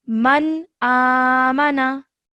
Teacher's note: Okay, over here you can see noon sakin again. The next letter is alif, and alif is one of the izhar letters, so that means that we do not produce a nasal sound on the noon. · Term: no nasal sound